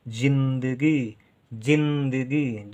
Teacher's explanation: जिंदगी, जिंदगी, जा में छोटी की मात्रा, क्योंकि जी कम देर तक बोल रहे हैं, आधा ना और द, जिंद गी, गा के साथ ई का उच्चारण तो गा में बड़ी की मात्रा, गी देर तक उच्चारण है।